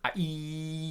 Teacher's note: Um, and they'll and and it will just be filled with these these squiggly different vowel sounds essentially because the I sound the the the letter I is actually the E sound E and it is the it is the furthest forward and the furthest north in the mouth E. Your tongue is pressed almost right up against the top teeth.